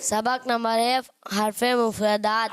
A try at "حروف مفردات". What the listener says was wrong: حرف نہیں ہے, حروف مفردات.